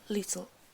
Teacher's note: A feature of young people's accent is T-glottaling. It consisted of substituting a glottal stop of a T for a T sound between vowels.